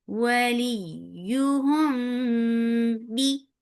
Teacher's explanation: This is ikhfa shafawi, so you're keeping the sound in your nose. For gunna, this is gunna kamila.